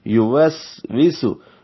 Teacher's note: یو جلدی سے پڑھیں گے، واو کو سین سے ملائیں گے، سین سیٹی جیسی آواز سے، واو دونوں ہونٹوں کی گلائی سے